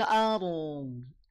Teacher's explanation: Roknya alirkan sedikit, tawasud, tidak perlu dialirkan seluruhnya ya, tengah-tengah antara mengalir dan terhenti. Dodnya jangan dipantulkan, tahan, jangan sampai memantul, tapi alirkan suaranya.